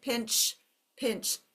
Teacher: my throat moves but it does not vibrate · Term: quiet sound